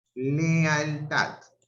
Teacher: Acá tengo dos vocales abiertas juntas, una E y una A. Sí, en este caso constituye un hiato, hay una ruptura.